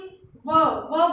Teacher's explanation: व बोलते ही ऊपर के जो दांत हैं वो नीचे वाले होंठ से स्पर्श करेंगे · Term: दंतोष्ठ्य